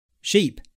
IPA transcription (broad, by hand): ʃip